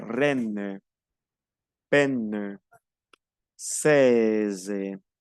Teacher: EI es una E más grande de lo normal, yo digo E. Tengo que abrir más la boca. Al abrir más la boca es un poco más alargada.